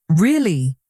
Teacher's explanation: flat voice, it sounds bored.